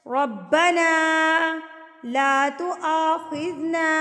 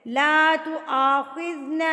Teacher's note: اب یہاں پر چھوٹی مد ہے، اس کو 3 حرکات کے برابر آپ نے کھینچ کے لمبا کرنا ہے.